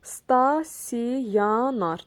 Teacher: Deməli, buradan bir Y hərfi əlavə olunacaq, bir də O hərfi A-ya keçəcək